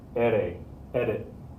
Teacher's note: Nobody says edit. You're not really fully pronouncing the D there. You're saying it with the tip of the tongue flapping.